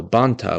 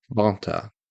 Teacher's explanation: I think we could also add nasalization in, where we would have a rule that says that nasal codas disappear while nasalizing the vowel that they are accompanied with. So banta would become banta.